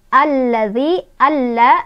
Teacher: Yang pertama lamnya sukun, lam yang kedua berharokat fathah. Sehingga lam yang sukun tidak dibaca, kita langsung masukkan ke lam yang harokat fathah. Alif lam yang tidak dibaca namanya alif lam syamsiah.